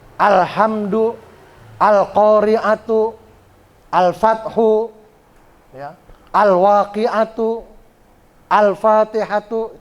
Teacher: al-qamariyah tuh yang begitu, yang lamnya hidup ya. Yang kedengaran L-nya.